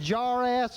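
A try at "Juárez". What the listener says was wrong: You ain't saying it right, son. No, it's Juarez. The J is silent, man. Juarez. That's right. The J is silent. You don't say the J.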